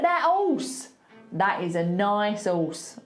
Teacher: We just don't like the H's if they're at the beginning of a word